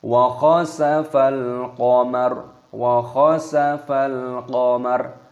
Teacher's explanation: Di sini lam alif lam qamariyah, maka dimatikan lamnya, dibaca wa khasafal qamar.